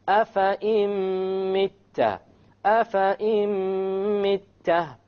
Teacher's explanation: So we drop the noon and we put the hamza along with the meme, and that is our idgham with ghunna.